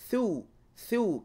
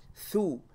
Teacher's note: It's thu. There's a thrust of air when pronouncing the tha. Tongue between the teeth, thrust of air, like in the word thrust.